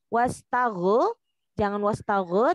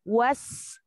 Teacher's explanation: Dia hanya ada sifat rokhawah, jadi jangan dipantulkan. Wastaghu, jangan wastaghu, tetapi wastaghfir.